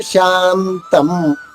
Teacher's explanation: షాద తర్వాత ఉన్న సున్నా నాలా పలకాలి, మాలా కాదు. శాంతం కాదు, శాంతం.